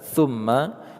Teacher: mim bertasydid, kita baca secara gunnah atau dengung, juga disertai dengan ditahan